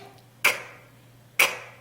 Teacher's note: C의 소리는 크. 성대가 울리지 않고 바람만 크 하고 나오는 세는 소리입니다. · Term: 새는 소리